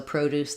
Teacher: we just stress on Pro and then we still have Deuce